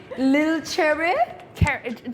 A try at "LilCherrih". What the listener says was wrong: Just no H, just cherry. Cherry. It's like a little cherry, but It's a cherry.